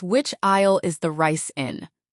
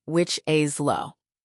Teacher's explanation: It's pronounced like al. The S is completely silent